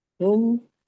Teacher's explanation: mim sukun bertemu dengan mim itu idgham mimi, didengungkan dan dibaca secara sempurna